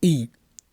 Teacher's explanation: ई का उच्चारण तालु से होता है